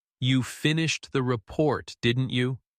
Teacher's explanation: Notice the tiny pause at the comma and the upward glide at the end.